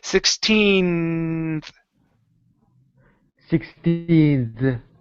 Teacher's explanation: you're going to hold that n for just a second then add the th